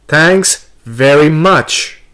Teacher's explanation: here we have stressed on thanks and much